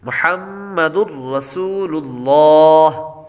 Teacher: پہلے ہا کے بعد میم ہے، میم مشدد ہے اور میم مشدد پر ہمیشہ غنہ ہوتا ہے تو یہاں پر غنہ کریں گے. آگے دال پر تنوین ہے، تنوین کے بعد را حروف یرملون میں سے آ رہا ہے اس لیے غنہ نہیں کریں گے کیونکہ را اور لام میں غنہ نہیں ہوتا. · سین کے بعد واو حروف مدہ میں سے ہے اس لیے اس کو ایک الف یعنی 2 حرکات کے برابر لمبا کر کے پڑھیں گے